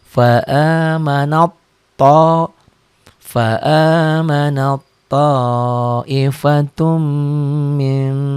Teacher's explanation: Nah ini ketemu to, diidghamkan. Jadi bunyi taknya berubah menjadi to.